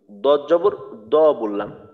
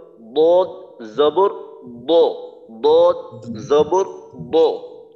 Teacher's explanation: দদ যখন উচ্চারণ করতে হয় তখন কিন্তু আওয়াজটাকে মোটা করতে হয়। শুধু মনে করেন আমি দদ জবর দ বললাম, অর্থাৎ হাঁটু ভাঙা দ আমরা যেভাবে বলি আর কি, বাংলা দ, তো ওই দর মতো করে পাতলা ভাবে হুবহু এরকম একটা উচ্চারণ করলাম, দদ জবর দ বললাম, তাহলে কিন্তু এই ক্ষেত্রে আরবি উচ্চারণটা হবে না।